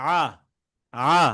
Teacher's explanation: আ এটা একদম কন্ঠ মাঝখান থেকে